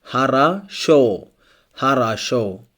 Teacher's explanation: Harasho here, only the last O is stressed. The first and second O are not stressed, so it's pronounced like A.